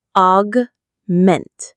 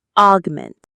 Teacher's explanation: The stress is on the second syllable, ment.